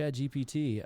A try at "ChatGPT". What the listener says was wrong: swear to God, every time you say that, I think you're saying Chad.